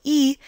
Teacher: the vowel e would be classified as a high front unrounded tense vowel